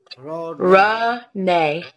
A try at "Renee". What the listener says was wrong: But together. Yeah, Renee.